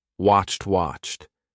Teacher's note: When you have a CH and an ED, it's going to be CHT. Okay? And make sure you don't say washed.